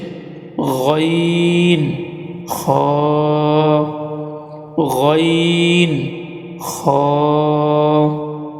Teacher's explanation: হলকের শেষ ভাগ হইতে দুইটি হরফ উচ্চারিত হয়